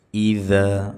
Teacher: dza ujung lidah menempel dengan ujung-ujung gigi seri atas, jangan dibaca dengan z. Iza, ya, jadi jangan mirip z, jangan mirip dal.